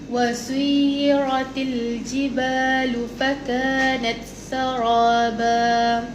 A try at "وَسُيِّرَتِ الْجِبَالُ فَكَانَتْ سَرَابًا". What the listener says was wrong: Cuba bagi tebal lagi ra tu. Saraba, buka rahang kan.